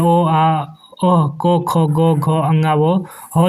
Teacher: अ और आ जो है वह कंठ से उच्चारण होने वाले वर्ण है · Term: कंठ वर्ण